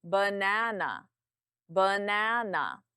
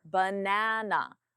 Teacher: louder and longer na is the stressed syllable B and uh are the unstressed